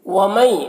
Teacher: नून साकिन के बाद या है हरूफ यूमिन में से, तो इदगाम नाक़िस होगा, नून को या से मिलाकर गुन्ना के साथ में पढ़ेंगे।